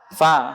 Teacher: Bibir bawah bagian dalam ketemu gigi sari atas.